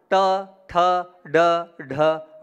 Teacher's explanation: जीभ को जब आप पीछे ले जाएंगे वहां से ण का उच्चारण होगा